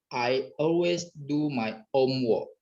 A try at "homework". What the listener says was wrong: Homework. Belakang work, bukan walk ya. Homework. Coba.